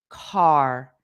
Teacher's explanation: for the word car, you can't separate the vowel and the R sound. They're just together. R. So it's impossible to just have the A without the R sound.